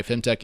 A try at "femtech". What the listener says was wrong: It sounds like fintech a little bit.